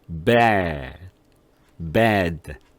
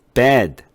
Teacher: bad 할 때는 침대, bed 할 때와 다르게 목소리가 저음이 나오죠. 그것은 뭐냐면 저음이 나온다는 것은 무슨 얘기냐면 입의 간격이 벌어졌기 때문에 그런 거예요.